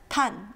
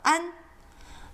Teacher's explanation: there isn't a very good English equivalent. It's not an, and it's not on. It's somewhere in between.